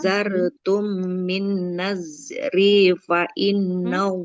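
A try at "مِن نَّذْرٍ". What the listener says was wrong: Tidak min nazri. Ada di sini harokat ro-nya tanwin ya. Min nazrin, tidak min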